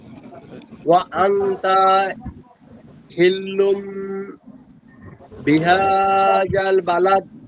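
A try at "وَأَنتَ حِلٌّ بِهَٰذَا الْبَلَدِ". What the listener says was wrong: জি, ইকফাগুণটা একটু বেশি হবে এবং হরকতের জায়গায় যেন টান না হয়, এদিকে একটু খেয়াল রেখে আবার একটু বললে ভালো হয়।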